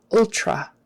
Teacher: Typically in regular conversation, people will turn that T into a CH kind of a thing.